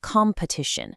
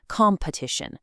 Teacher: Now, notice that first vowel. In the UK, it's more of an O sound, competition. But in the US, it opens up to an A sound.